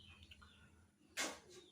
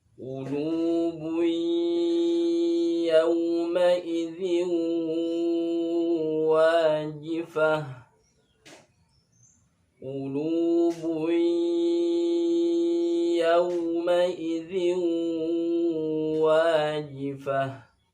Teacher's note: Ini tempatnya berada di pangkal lidah. Pangkal lidah dekat dengan anak lidah. Tempat keluarnya huruf qaf.